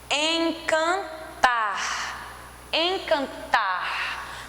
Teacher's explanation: Você percebe que o tar, você demora mais falando ele